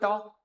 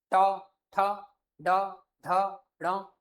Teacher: उसके ऊपर जो यह वाला हिस्सा है इसे आपका मूर्धन्य कहते हैं। ट बोलो ट आपकी जीभ फोल्ड हो के ऊपर लग जाएगी